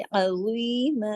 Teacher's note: फौजन अजी, अजीमा, अजीमा, ठीक है। ज़ा को ज़ा मोटा पढ़े, आइन को हलक से, अजीमा, अजी को भी अजी दो हरकत खींचने, अजीमा।